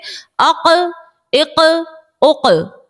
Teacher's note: ہماری آواز جو ہے وہ لوٹتی ہوئی نکلے گی, خوب ظاہر کر کے ہم نکالیں گے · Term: حروف قلقلہ